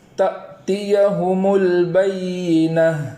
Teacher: البینۃ میں لام کے جزم کو اس طریقے سے پڑھیں گے کہ وہاں زبر نہ ہو جائے، اور آخر میں جو گول تا ہے اس گول تا کو وقف کی حالت میں ہا سے بدل دیتے ہیں، ہائے ساکنہ سے بدل دیتے ہیں۔